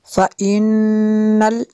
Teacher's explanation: نون مشدد ہے، یہاں پہ غنہ کریں گے۔